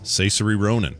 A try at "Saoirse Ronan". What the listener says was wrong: How did you pronounce Saoirse Ronan's name? Saoirse. Rhymes with inertia. I think you said Caesary.